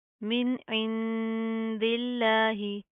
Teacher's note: हा के ऊपर जज्म आएगी वक्फ की सूरत में, तो फिर हम जस्ट हा की आवाज़ को वाज़िया करेंगे, ठीक है। यहाँ पर हम ज़ेर की अदायगी नहीं करेंगे।